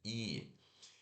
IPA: i